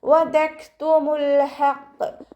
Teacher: കാഫ് സുക്കൂനാവുമ്പോൾ കുറച്ച് air pass ചെയ്യണം, കാറ്റ് കുറച്ച് പുറത്തോട്ട് പോണ സൗണ്ട് കൊടുക്കുക